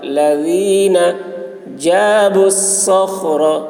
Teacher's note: صاد کی آواز سخت ہوگی خا کو حلق سے ادا کریں گے